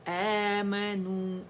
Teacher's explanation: یہ مد بدل ہے، کیونکہ یہاں پہ مد لیٹر الف کبیرہ جو ہے ممدودہ حمزہ کی آواز کو 2 کاؤنٹ کے لیے کھینچ رہا ہے